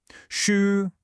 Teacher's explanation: For pronunciation, the first thing we have to get right is that initial sound. It's a clear shh sound, not an S. To make it, you need to curl the tip of your tongue up slightly. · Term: clear sh sound